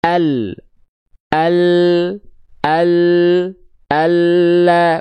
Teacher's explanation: Namun, bukan seluruh samping lidah, bukan dari samping lidah belakang menuju depan. Tapi lam itu dilafalkan dari tepi lidah atau sisi lidah atau samping lidah bagian depan. Yang kiri, begitupun dengan yang kanan di sana, ya, keduanya menyusur sampai ke ujung lidah ke sini. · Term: huruf lam